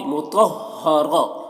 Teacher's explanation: फम मीम मुशद्दद है तो गुन्ना करेंगे, सुहुफम मुतहहरा, मुतहहरा। देखिए यहाँ पर तो को मोटा करके पढ़ रहे हैं और रॉ को भी, मुतहहरा, रह, रह बोल रहे हैं, रह नहीं बोल रहे, रह।